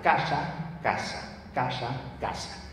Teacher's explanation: La de los españoles, centro y norte, es apicoalveolar.